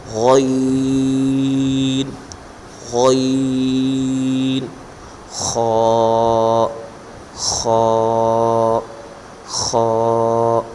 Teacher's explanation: غین یہ حلق کے اوپر والے حصے سے ادا ہوتے ہیں، یعنی منہ والی طرف سے جو حلق ہے، حلق کا جو اوپر والا حصہ ہے یہاں سے غین اور خا حرف کا مخرج ہے۔